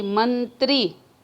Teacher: त्री पर हम जोर दे रहे हैं तो ये बालाघात हुआ।